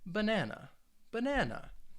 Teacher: there are three syllables in the word banana and the stress is on that second syllable banana and again when we're talking about syllable stress you don't